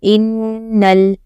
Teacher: نون مشدد ہے تو گنہ بھی کرنا ہے